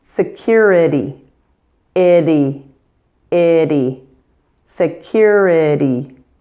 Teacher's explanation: Another thing to note is the American pronunciation of the letter T in this word. It's a flap T, so it sounds like an English D sound, since it occurs between vowels in this word.